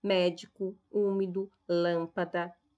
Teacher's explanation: das palavras proparoxítonas aquelas onde a antepenúltima sílaba é tônica